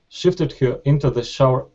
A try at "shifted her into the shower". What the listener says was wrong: Good, that's much better, okay?